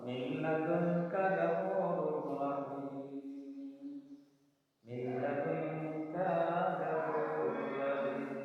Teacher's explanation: যেমন এখানে আছে নুন সাকিন বা তানবিন লাম এবং রে, এই দুটি হরফের কোনো একটি হরফ আসলে নুন সাকিন বা তানবিনকে গুণনা না করে ওই হরফের সাথে মিলিয়ে পড়তে হবে। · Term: গুণনা ছাড়া